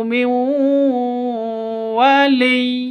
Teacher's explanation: Cara bacanya masuk ke waw disertai dengung 2 ketukan karena bacaan idgham bi gunnah